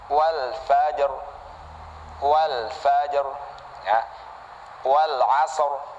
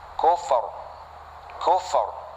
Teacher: roknya dibaca tebal karena sebab dia kita wakofkan sebelumnya mati, sebelumnya lagi adalah harokat fathah atau dhammah. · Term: rok tebal